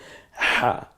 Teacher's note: হাটা গলার মাঝখান থেকে চাপ দিয়ে উচ্চারিত হয়, হা, একটু ফ্যাস ফ্যাসা আওয়াজ হবে, হা।